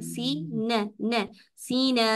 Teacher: नून के ऊपर सिर्फ जबर है, इसके जबर को लंबा नहीं करेंगे, जबड़े को नहीं हिलाएंगे, सिर्फ जबान हिलानी है, नून के मखरज से हटानी है।